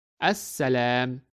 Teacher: this letter sin is of the Shamsiya type. And that is why we do not pronounce the letter lam and we read it as As-Salam.